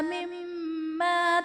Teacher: مما میں میم مشدد ہے غنہ کر کے پڑھیں گے